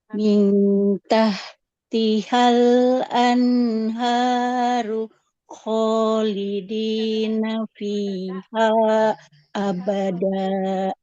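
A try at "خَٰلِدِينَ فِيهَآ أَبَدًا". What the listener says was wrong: Hanya kurang ibu ya, 4 harokat. Khalidina fiha abadan.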